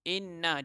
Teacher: nun yang bertanda syaddah atau nun yang kita tekankan semestinya merupakan wajib dengung, wajibul ghunnah